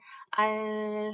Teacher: 그래서 뭐 알 해보시면 알 발음해보시면은 알 하실 때 어때요? 혀 양쪽으로 기류가 새서 나오죠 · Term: 유음